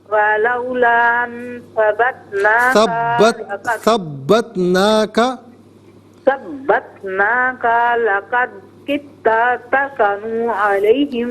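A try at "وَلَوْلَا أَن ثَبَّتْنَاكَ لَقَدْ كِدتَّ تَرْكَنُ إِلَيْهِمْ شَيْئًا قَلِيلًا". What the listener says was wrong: علیہم نہیں ہے میری بہن، الیہم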